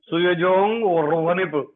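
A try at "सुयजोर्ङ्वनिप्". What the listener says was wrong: सुयजोर् but ra comes before nga suyajor manip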